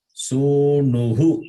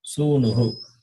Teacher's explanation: Visarga takes the sound of the preceding vowel.